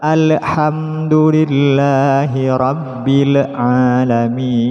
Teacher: Alhamduh, terkadang masih ada sebagian yang membaca alhamdulillahi rabbil alamin. Jadi lam sukun di sini masih terdapat pantulan